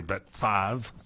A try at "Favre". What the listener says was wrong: Favre. It's Favre. But you can't pronounce the R before the V. Favre.